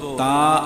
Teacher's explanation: تا کا مخرج زبان کا نوک اور ثنایا علیا کا جڑ، یعنی جب ہم زبان کے نوک کو سامنے اوپر کے دو دانتوں کے جڑ سے لگاتے ہیں تو تا ادا ہوتا ہے۔